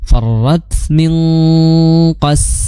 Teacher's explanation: Kalau kita e mudahkan dalam memahami bahwa nun sukun ketemu qof itu bunyinya eng. Kemudian disertai dengan menaiknya pangkal lidah ya menimbulkan suara tebal · qaf tebal karena dia memiliki sifat isti'la. Kemudian sin di situ qas langsung tipis, ya, setelah qaf mengucapkan huruf yang tebal langsung jatuh tipis. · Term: ikhfa, ikhfa yang ab'ad